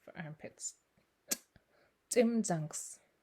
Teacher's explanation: It's just like an English TS, but again it pops out a little harder. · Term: hard TS